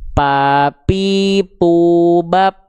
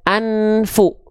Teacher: Jadi jangan ada lagi huruf fa teman-teman yang tidak mengalir nafasnya karena dibaca P. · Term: hams